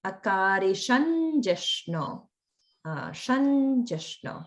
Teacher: We'll change it to the nasal na that comes with ja.